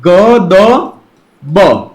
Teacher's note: घोष अल्पप्राण ध्वनि ग द ब